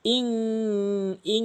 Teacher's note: এটা ইন পড়া যাবে না, ইং পড়তে হবে, গুন্না করতে হবে।